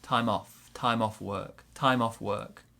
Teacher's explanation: work time off work maybe a small stress on time also we link the m and the o